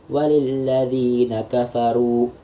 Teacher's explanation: Kafaru ini dibaca panjang 2 harokat di huruf ra yang berharokat dhammah dan juga bertemu dengan satu huruf mat yaitu waw sukun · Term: mat asli